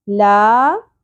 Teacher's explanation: لا حرف مدہ ہے، الف سے پہلے زبر، ایک الف کے برابر کھینچیں گے.